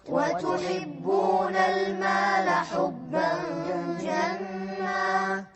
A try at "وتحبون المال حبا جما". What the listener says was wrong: لازم نساوي بين المقادير، مقدار الغنة هني. وتحبون المال حبا جما.